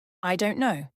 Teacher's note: one Rising tone I don't know uncertainty